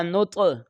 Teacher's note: یہ طوا حروف قلقلہ میں سے ہے، اس کی آواز لوٹ کر آئے گی